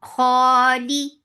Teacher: The sound is short. Kha, make it heavy by lifting your tongue up.